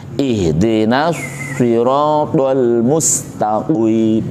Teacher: untuk Shad harus moncong karena hurufnya istilla istila itu mengangkat lidah karena lidahnya diangkat maka bibirnya otomatis moncong atau tebal